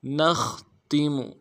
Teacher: نون کو خا کے ساتھ ملانا ہے، خا کو موٹا ادا کرنا ہے، اور خا میں آواز جاری رہے گی جب ساکن ہوگا۔ تا کو نرمی سے ادا کرنا ہے، میم کو بھی نرمی سے ادا کرنا ہے۔